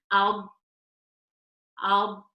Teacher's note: with the lam, we're using the fronted edge of the tongue, touching the gums of the upper front teeth from canine to canine. Okay, so again, the fronted edge of the tongue, touching the gums of the upper front teeth from canine to canine.